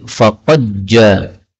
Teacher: dal ketemu dengan jim boleh idgham menjadi faqad ja